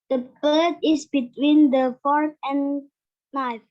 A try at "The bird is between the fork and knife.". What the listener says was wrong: Yes, betul. Silent K. Hampir kesebut kaknya. Knife. Great job.